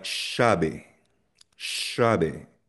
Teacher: instead of saying yabe, dito sa Buenos Aires, binibikas namin na shabe